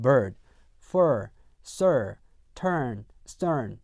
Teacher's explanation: R 사운드, 즉 R 색채, R 컬러가 있는 모음이에요.